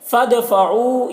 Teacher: دال کی آواز ڈبل نکلے گی، ایک جنبش ہوگی اس کی آواز میں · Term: قلقلہ